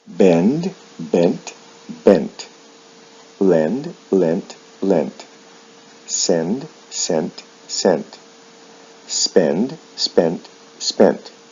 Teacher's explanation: there is no vowel sound shift in the past and the past participle but the final D sound is changed to a T